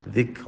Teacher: ذکر میں دال پڑھتے ہوئے زبان باہر نکالیں